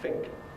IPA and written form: fɪŋk (think)